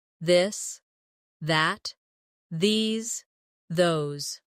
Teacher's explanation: For the harder th in this. add a bit of voice to the sound. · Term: voiced the sound